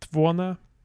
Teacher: we have our unstressed mid vowels turning to schwa and then promptly deleting.